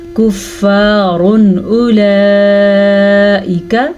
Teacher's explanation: کفار اولئک، یہ باریک کاف ہے، را کو پر پڑھیں گے، را کے اوپر دو پیش کی وجہ سے، اور تنوین یعنی دو پیش کو ہم ظاہر کر کے پڑھیں گے کیونکہ آگے ہمارے پاس حروف حلقی میں سے حمزہ آیا ہوا ہے. جب الف کے اوپر کوئی حرکت آ جائے تو وہ الف نہیں رہتا بلکہ حمزہ بن جاتا ہے.